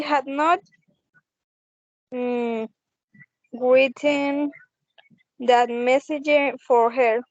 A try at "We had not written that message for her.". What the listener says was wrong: Es que tienes que tener cuidado porque tú estás pronunciando la palabra writing como si fuera el inglés británico. Estás combinando inglés británico con americano. Es written. Y la palabra, la palabra que dice that message, se pronuncia message for her.